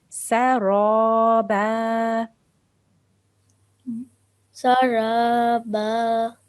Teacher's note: Remember that ra with a fatha, then you have to make that a thick sound.